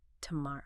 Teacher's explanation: Practicing that specific three beat rhythm is key to making it sound natural, especially because the final O sound is often quite soft, maybe even reduced towards a schwa sound.